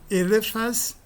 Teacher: O acréscimo do S no nome nativo produz a queda da dental t e também a queda da nasal n. E para compensar a queda da nasal, alonga-se a vogal A.